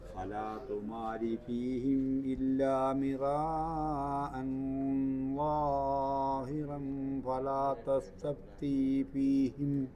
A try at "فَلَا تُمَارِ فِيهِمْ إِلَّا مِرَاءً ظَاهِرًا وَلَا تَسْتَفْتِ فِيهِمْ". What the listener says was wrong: രണ്ട് സ്ഥലത്ത് വേണ്ടാത്ത നീട്ടി. ലാഹിറന്നില്ല. ഇവിടെ മുതൽ അതുപോലെ തന്നെ വലാ തസ്തഫ്തി എന്നില്ല, ഒരു അലിഫേ ഉള്ളൂ.